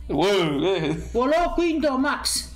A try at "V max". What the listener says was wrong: Ma come quinto max? È sempre una V. Esatto.